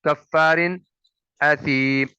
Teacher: کاف پیش لام کل، لام زبر لا، کل، کاف زبر فا کف، فا زبر الف فا، کفا، را دو زیر رن، کفارن۔ دیکھیں تنوین کے بعد حمزہ ہے جو کہ حروف حلقی ہے، حرف حلقی ہے، اس وجہ سے یہاں پہ اظہار ہوگا